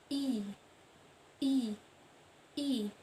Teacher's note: posisi lidah maju ke depan, bentuk mulut tak bundar, serta strukturnya tertutup. I.